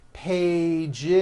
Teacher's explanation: one page becomes two pages with that vo Z two pages it's not two pages unvoiced no it's two pages with a voiced Z